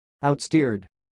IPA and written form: aʊt.stɪrd (Outsteered)